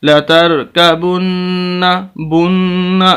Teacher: نون کی آواز بالکل پتہ چل رہی ہے ناک کے اندر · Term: غنہ